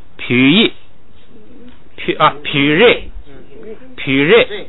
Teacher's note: 本来是撇，但是前不降，你不能带那个降的尾巴，就只能升不能降了 ，把那个降去掉，就变成了2声，变成了皮瑞，前边升后边降，变成这样。下边喇叭，本来是拉，本来要降下来的，但是前不降，所以把降的那一半去掉，只剩下升，就是喇叭，来嘎，3声都变成2声了。下边一个说这个低调送气的声母在第2音节变不送气，这个呀你就把它并到那个就是咔嚓嚓啪嚓有前加字上加字那儿去。它如果有了前1音节，它在后1音节呀，你把前1音节就当成前加字，就是前头一有东西一堵，它就不送气了。但它这样有区别。就是它如果是前加字的时候，它调不变。对。如果是连读的时候呢，它可能会涉及到